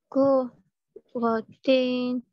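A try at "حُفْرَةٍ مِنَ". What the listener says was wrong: Masuk bunyi mim lama sikit. Kufratim. Hukum idgham. Kufratim.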